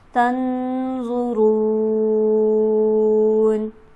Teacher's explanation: तन के नून पर हम गुन्ना करेंगे क्योंकि नून साकिन है और इसके बाद हरफ हल्की भी मौजूद नहीं